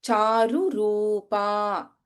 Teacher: we have Ru and Ru, Hrasva and Dirgha next to each other